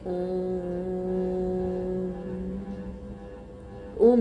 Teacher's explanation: और तीसरा स्वर है प्लुत स्वर। प्लुत स्वर के ऊ को बोलने में दीर्घ स्वर से भी ज्यादा समय लगता है